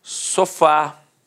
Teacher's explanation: repare que a sílaba tônica é a última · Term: oxítona